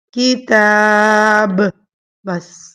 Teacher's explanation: میں با کی زبر کو نہیں پڑھوں گی، ٹھیک ہے۔ اس کو با کو ساکن کر دوں گی، کتاب، بس۔ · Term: وقف